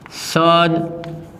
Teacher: તો અહીંયા રહેલો દ વર્ણ ઘોષ વ્યંજન છે અને ત્યારબાદ આવતો ક વર્ણ છે એ અઘોષ વ્યંજન છે, માટે અહીંયા દ વર્ણ જે વર્ગનો છે તેના વર્ગનો પ્રથમ વ્યંજન એટલે કે ત, તો શબ્દની સંધિ સત્કાર્ય થાય.